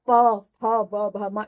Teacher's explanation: प वर्ग का उच्चारण स्थान ओष्ठ होता है, इसलिए इन पांचों को हमने ओष्ठ उच्चारण स्थान होने के कारण इसको हमने प वर्ग में रखा है। प बोलने के लिए हमने दोनों ओंठ को जोड़ना पड़ता है, तब प फ ब भ म इस तरह से उच्चारण होता है, या ध्वनि इस तरह से बाहर आती है।